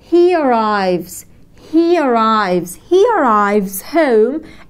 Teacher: يجب أن نربط الحروف المتحركة ببعض بإضافة y خفيفة في النص